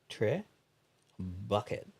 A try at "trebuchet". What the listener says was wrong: Tre. Bouche. A. The T is silent at the end of most French words.